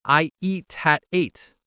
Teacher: The T in eat links to the A in at.